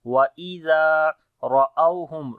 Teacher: ra we read in heavy sound due to fatha sign on it